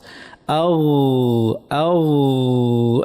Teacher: জিহ্বার গোড়াটা আমাদের উপরে যে মুখের তালু আছে একদম তার পিছনে লাগিয়ে কন্টিনিউয়াস একটা আওয়াজ করতে হবে, নরম আওয়াজ। আও আও, নরম একটা চলমান আওয়াজ করতে হবে।